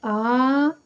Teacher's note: आप आ का उच्चारण करेंगे तो आपको लगेगा कि मुख के पिछले हिस्से से इसका उच्चारण निकल रहा है। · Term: पश्च स्वर